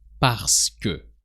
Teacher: In spoken French, you're more likely to hear parce que. So you just remove or skip the E sound in the middle of parce que and it becomes parce que.